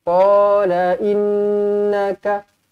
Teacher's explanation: nun sabdu di sini didengungkan 2 harakat wajibul gunnah